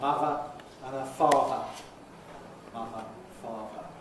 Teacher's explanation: The voiced one [ð] goes to [v]. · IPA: ˈmʌvə, [ˈmʌvə]